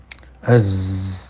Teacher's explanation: Siulnya za mirip dengan suara gerombolan lebah gitu ya. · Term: sofirnya